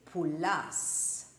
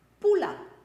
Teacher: The stress doesn't go on the end syllable, it goes on the second last one.